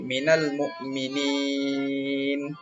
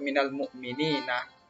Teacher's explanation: jadi na-nya tidak boleh dibaca minal mukminina, mesti dimatikan. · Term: mad arid bisukun